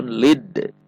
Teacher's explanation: ada huruf Dal sukun maka di sini ada bacaan Qalqalah atau memantul · karena di tengah kalimat maka pantulannya sugro atau qalqalah sugro, qalqalah kecil.